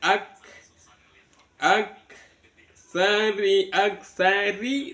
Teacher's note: ditahan di ka tempatnya ka kemudian dilepas ada ada suara angin